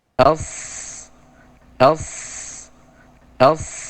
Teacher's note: penebalannya tanpa dua bibir tanpa mengedepankan dua bibir menebalnya dari mana dari naiknya lidah yang belakang bagian belakang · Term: huruf shod